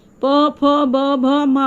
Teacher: फिर त वाला दांत के पास आके जीभ लगती है, तो ये त वर्ग त थ द ध न, ये सब बोलने में दांत के पास जीभ आपकी लगेगी। और प फ ब ओठ से होती है